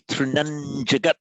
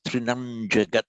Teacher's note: So when you see that dot there, it is the nasal sound, and the nasal sound will then adjust itself to whatever follows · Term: anuswara